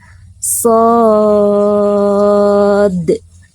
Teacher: lalu terakhir ada huruf dal dipantulkan ya